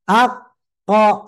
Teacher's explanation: berarti memang yang membuat tebal itu karena pangkal lidah diangkat